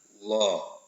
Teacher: Kenapa? Karena sebelum lafaz Allah ini terdapat harokat fathah, huruf yang berharokat fathah. Maka dibacanya tebal atau lam tafhim.